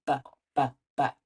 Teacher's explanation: the b sound does use our voice, which means we feel a buzz when we do b, b, b.